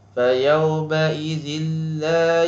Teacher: Tanwin bertemu dengan lam, iaitu hukumnya idgham bila gunnah. Ini idghamkan bunyi tapi tidak ada gunnah.